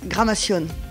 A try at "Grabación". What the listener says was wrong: No, tu l'as mal dit. Voilà, c'est Gramación, c'est Grabación, non Gramación. Graba, Grama, she said Grama.